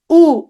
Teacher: দেখো তো জিভ সাথে সাথে পেছন দিকে চলে গেছে, একটু ভেতরের দিকে দেবে গেছে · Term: পশ্চাৎ স্বরধ্বনি